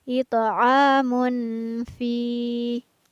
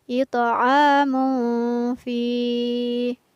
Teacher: ada tanwin yang bertemu dengan huruf fa, maka tanwinnya dibaca samar.